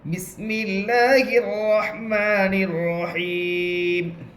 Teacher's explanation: میم کے نیچے زیر ہے، زیر کو حالت وقف میں جزم سے بدل کر پڑھیں گے